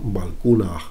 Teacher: Esa aspiración al final, o valcuna, recayendo el acento en la U de Q, porque es una U un poco larga, ¿no? Valcuna.